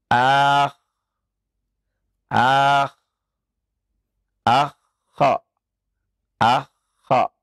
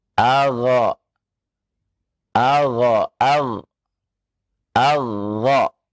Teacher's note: Nah, adna uha ghainun kha'u. Yang paling dekat makhraj dari al-halaq, yakni ghainun kha'u.